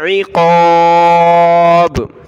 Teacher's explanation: عین کو گلے سے نکالیں، قاف کو موٹا کرنا ہے، عقاب.